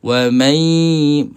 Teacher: Jadi bila kita sebut ma terus pergi kepada makhraj huruf ya. Nun ini kekal di hidung sahaja. Sifat ghunah kena ada. Wamai. Ha bila kita dengung makhraj kita berada pada huruf ya. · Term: idgham maal ghunnah, idgham ma'al gunnah